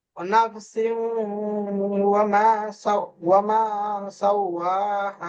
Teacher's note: সিনের নিচে তানবিন এসছে, তারপরে ওয়াও এসছে। তানবিনের পরে জি, ইয়াউমিনের 4টি অক্ষরের মধ্যে একটি অক্ষর ওয়াও আছে, তাই একে একালিক পরিমাণ গুণনা করে পড়তে হয়। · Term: ইদগামে নাকিস